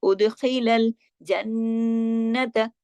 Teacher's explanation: اب اگلا ورڈ دیکھیے، وَأُدْخِلَ الْأُدْ، دال پہ دیکھیں جزم ہے، دال پہ کلکلا ہوگا، اُدْخِلَ خا موٹا اور خا گلے سے خراش کے ساتھ